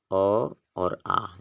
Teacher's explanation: तो पहला आपका दिया है कंठ स्वर यानी कंठ से बोले जाने वाले शब्द जो होते हैं स्वर अ और आ जो है इनको हम कंठ की सहायता से बोलते हैं